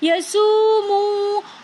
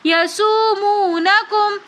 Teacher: فرعون یسومونکم میں ہم یہاں پر پڑھیں گے، واو مدہ ہے تو اس وجہ سے یسومو، دونوں واو کو ایک ایک الف کی مقدار کھینچ کر پڑھیں گے۔ یسومونکم، آگے سو میں مد متصل ہو رہی ہے تو اس لیے اس کو ہم 3 الف کی مقدار کھینچ کر پڑھیں گے۔